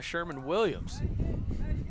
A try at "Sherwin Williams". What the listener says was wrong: It's Sherwin Williams, not Sherman. Sherwin Williams. Sherwin?